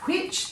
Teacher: if you say that which there is air after the W so there would be an H after the W can see